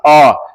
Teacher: इसको बोलने में आपका जीभ जो है ना खिंचाता है और बीच में चला जाता है। जैसे बोलिएगा अ, देखिएगा आपका जीभ हल्का सा खींचेगा और बीच में चला जाएगा, ठीक है। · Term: मध्य स्वर